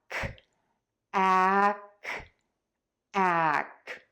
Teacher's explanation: Your mouth is going to close a bit and then you're going to let the air puff out of your mouth for that k